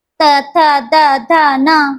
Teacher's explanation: यांचा उच्चार करताना जिभेचा शेंडा दाताच्या मागे लागतो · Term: दंत्यवण